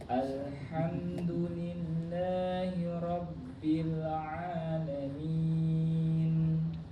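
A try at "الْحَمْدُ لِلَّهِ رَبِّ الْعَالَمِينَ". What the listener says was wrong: lillahi, tipiskan lagi.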